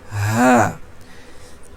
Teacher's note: মুখের মধ্য থেকে কোথাও কোন চাপ পড়বে না একেবারে হলকের শুরু থেকে শুধু বাতাসটা বের হয়ে আসবে